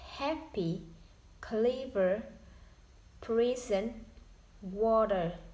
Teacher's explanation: The primary stress falls on the first syllable.